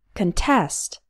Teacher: the stress is on the second syllable so we pronounce the first part K contest contest is a